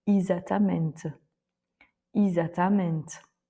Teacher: On l'entend assez régulièrement en portugais, donc là le E se prononce I.